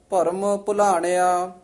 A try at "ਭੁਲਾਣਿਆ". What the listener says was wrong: ਆ ਤੇ ਨਹੀਂ ਬਿੰਦੀ ਲਾਉਣੀ, ਭੁਲਾਣਿਆ ਆ ਇੱਥੇ ਨਹੀਂ ਬਿੰਦੀ ਲਾਉਣੀ।